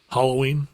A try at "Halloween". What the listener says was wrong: You say Halloween. All good-hearted people say Halloween with the With the short A. Do you hollow things instead of hallow them?